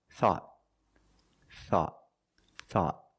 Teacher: Thought at the end, the tongue goes up and makes a stop T. Not thought, but thought.